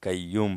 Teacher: हैं कयूम तो कय ल है स्टिक वाला काफ नहीं है बारीक काफ नहीं है यह मोटा काफ है और इसको हम मोटा पढ़ेंगे